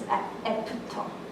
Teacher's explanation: After it becomes epto, right? So an F is always replaced with a P sound in Korean, for the most part.